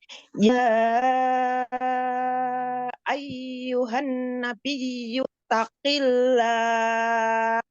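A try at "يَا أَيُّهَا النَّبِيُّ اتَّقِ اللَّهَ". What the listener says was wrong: Ulangi Umi, di situ ada nun tasdid, ini kurang gunanya. Langsung tasdid. Taqillah.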